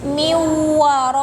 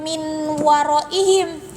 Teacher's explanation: Miwaraihim, bukan min waraihim, tapi si nunnya itu diasupkeun karena huruf wawu sehingga si nun atau tanwinna si enna eta teh henteu kabaca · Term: idgham